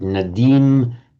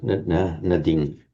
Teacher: in Sanskrit nadim, but in Pali it's shortened nadim